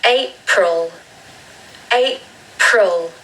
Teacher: if you want a British accent, there should be a schwa on the second syllable.